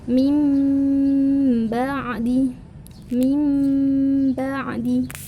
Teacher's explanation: intinya dengung diantara dua sampai tiga harokat lebih tepatnya lebih spesifiknya adalah merubah huruf Mbak menjadi huruf Mim · memang tulisannya itu adalah min ba'di, tapi kita membacanya mim ba'di, merubah huruf ba menjadi huruf mim. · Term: iqlab, iklab